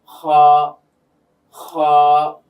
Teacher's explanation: এই হলক বা কণ্ঠনালীর শেষ ভাগ থেকে উচ্চারিত হয় দুটি হরফ আমরা পেয়ে থাকি, একটা হচ্ছে খ আর একটা হচ্ছে গাইন। তো খটা যখন আমরা বলছি দেখবেন যে গলার মধ্যে বা কণ্ঠনালীর মধ্যে একটা কম্পন সৃষ্টি হচ্ছে, আওয়াজটা প্রকম্পিত হয়ে বের হচ্ছে। খ খ। তো হা এর বেলায় আমরা একটা বাতাসের মতো বের করে চাপ দিয়ে বের করব, আর একটা হচ্ছে খ বলতে গিয়ে একটু প্রকম্পন সৃষ্টি হবে, সেটা বের হবে আওয়াজটা এভাবে খ।